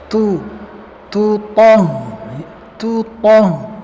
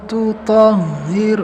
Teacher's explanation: to ini nggak boleh ada hamas karena sifatnya syiddah. Tu toh. Ya, jadi nggak ada hamas di huruf to ya.